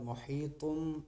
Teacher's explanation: मुहीतुम इक़लाब हो रहा है, गुन्ना के साथ हम पढ़ेंगे